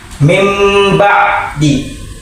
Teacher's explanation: Ba diganti menjadi mim disertai dengan dengung. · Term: iqlab